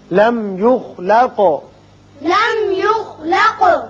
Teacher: میم پر اظہار ہوگا، خا پر پڑھیں گے، قاف پر قلقلہ